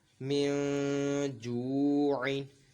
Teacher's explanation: نون ساکن کی آواز ناک میں لے کے جائیں گے اور ایک الف دو حرکات کے برابر کھینچ کر پڑھیں گے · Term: غنہ